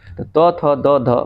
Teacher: त थ द ध बोलने से ही पता लग रहा है ये दंत है